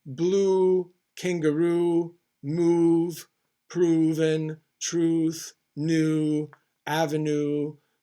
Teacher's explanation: it's a pure vowel formed with rounded lips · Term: long oo